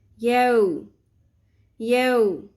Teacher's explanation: واو حرف لین نرمی سے ادا کریں گے، واو ساکن سے پہلے زبر ہے